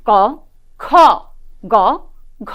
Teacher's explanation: প্রথমে আসি ক বর্গ ক খ গ ঘ এখানে উল্লেখ্য যে আমাদের প্রথম এবং তৃতীয় যে ধ্বনিটি রয়েছে তা কিন্তু অল্পপ্রাণ ধ্বনি এবং দ্বিতীয় এবং চতুর্থতে যে ধ্বনিগুলো আমরা পাই সেটি কিন্তু মহাপ্রাণ ধ্বনি